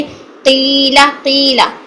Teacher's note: हम कॉफ को मोटे करने के चक्कर में इसमें वाव की साउंड पैदा कर देते हैं, तो वाव की साउंड नहीं आनी चाहिए।